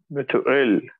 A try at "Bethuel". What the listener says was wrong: With the th. Bethuel. Bethuel. Bethuel.